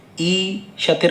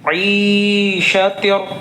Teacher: यहाँ ऐन निकाल कर पढ़ना है